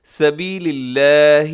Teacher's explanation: لفظ اللہ کو اب باریک پڑھیے گا کیونکہ اس سے پہلے لام کے نیچے زیر ہے